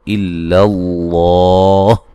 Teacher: لفظ اللہ کو موٹا ادا کریں گے، اس سے پہلے حرف پر زبر ہے اور یہ مد اصلی ہے.